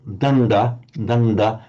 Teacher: you've got the dental du followed immediately by the retroflex du and preceded by the nasal d